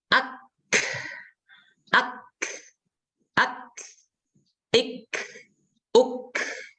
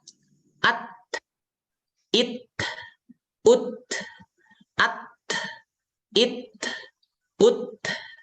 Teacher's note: Kaf dengan ta itu itu setelah sebelumnya itu tertahan Saya ulangi keluarnya udara ketika mengucapkan huruf Kaf dan ta yaitu ketika sebelumnya tertahan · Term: sifat hams